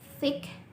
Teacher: formed by putting the tongue between your teeth, inter, and the teeth, dentals. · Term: interdentals